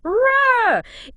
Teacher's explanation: linguists, they've actually described it as a raised alveolar non-sonorant trill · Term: Czech rah